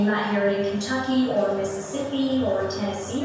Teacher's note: the Southern accents, and this one that I'm doing right now, you keep your R sounds